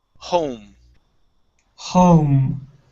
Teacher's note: So you're actually pronouncing 3 vowel sounds in one. So instead of starting off with an ah, okay, start with an o.